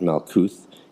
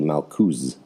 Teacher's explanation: The Sephardic pronunciation is used, but again, it is in an imperfect form. For example, the names of the Sephirot, Malkuth, is rendered in a correct fashion. In contrast to the Ashkenazi Malkus